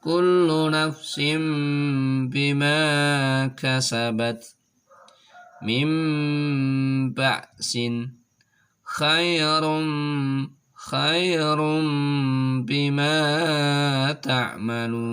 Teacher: maka suara nun sukunnya atau suara tanwinnya dirubah menjadi suara mim dengan disertai suara mendengung. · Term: iqlab